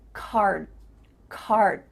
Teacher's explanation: my tongue is flat against the roof of my mouth to make the D but it's not coming out